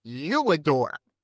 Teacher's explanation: Now you, if it was you and not I, we'd put a W glide in